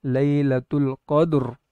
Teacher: پہلی مثال میں را ساکن سے پہلے دال ساکن اور دال ساکن سے پہلے قاف پر زبر ہے، تو اس لیے یہاں پر را ساکنہ بالوقف کو پر پڑھیں گے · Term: تفخیم